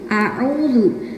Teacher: ketika melafatkan huruf yang berharokat fathah itu benar-benar A, dibuka mulutnya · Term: dibuka mulutnya A